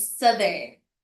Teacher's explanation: Nagbabago yung th hindi na siya soft nagiging voice th na siya.